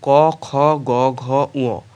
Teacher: এই ব্যঞ্জনগুলি উচ্চারণের সময় জীভের পশ্চাৎ ভাগ অর্থাৎ পেছন দিকে কণ্ঠস্পর্শ করে এজন্য এগুলোকে কণ্ঠ ধ্বনি বা ক বর্গীয় ধ্বনিও বলা হয় নেক্সট